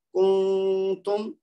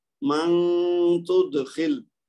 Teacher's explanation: ہم نے نون کی آواز کو تھوڑا سا لمبا کرنا ہے غنہ کے ساتھ، اس کو جلدی میں نہیں پڑھنا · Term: اخفا